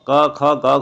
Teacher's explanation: अर्थात जब हम क, ख, ग, घ बोलते हैं तो हमें जो है कंठ से एक ध्वनि जैसी महसूस होती है कि आवाज़ जो है कंठ से आ रही है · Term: क वर्ग